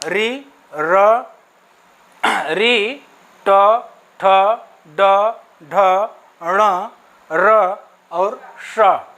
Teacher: इन वर्णों का उच्चारण करते समय आप ध्यान दीजिएगा कि इसके पहले जो आप उच्चारण किए हैं इचु यशानाम तालु में, जिह्वा थोड़ा सा और ऊपर जाकर के मुड़ती है, उस स्थान को कहते हैं मूर्धा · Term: मूर्धन्य वर्ण